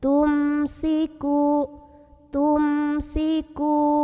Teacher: bacanya jelas saja m dan tidak perlu ditahan